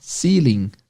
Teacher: Aprenda que na palavra ceiling, o stress é na primeira sílaba